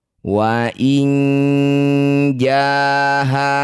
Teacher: Wa inin ja nun sukun bertemu jim disebut bacaan namanya ikhfa au safo. Bunyi nun dengungkan dua harakat. Ketika dengung lisan kita sudah bersiap bunyikan jim.